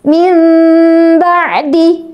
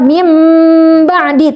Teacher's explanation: Jadi suara mimnya ada tetapi lembut. · Misalnya dalam kalimat min ba'di ya kita dan ini hasil talaqi kami pada guru-guru kami membaca iqlab dengan mempertemukan bibir atas dan bibir bawah tanpa ditekan. mempertemukan bibir bawah dan bibir atas dengan lunak ya, tidak ditekan seperti kita mengucapkan mim tasdid